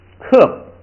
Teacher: 这个把调摁下来，平声变4声，然后还加上最后要把那个波的口型做出来